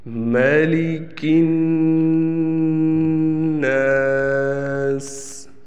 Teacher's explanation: یہاں پر میں نے ایک قاعدہ پیچھے پڑھایا تھا کہ نون مشدد پہ ہمیشہ غنہ ہوتا ہے، تو یہاں دیکھیں نون مشدد ہے، تشدید والا حرف ہے، اس پر ہم ایک الف کے برابر غنہ کریں گے